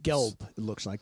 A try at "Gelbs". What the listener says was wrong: It has an S on the end,